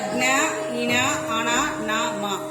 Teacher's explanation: వీటిని ముక్కు సహాయంతో పలుకుతాం కాబట్టి అనునాసికాలు అని అంటారు.